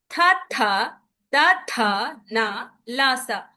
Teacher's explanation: ఈ అక్షరాల్ని పలికేటప్పుడు మన నాలిక అనేది దంతాలకి తగులుతుంది కాబట్టి వీటిని దంత్య అన్నాం.